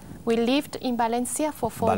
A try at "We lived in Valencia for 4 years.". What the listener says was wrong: Valencia es con V. Con V. Quiero más V.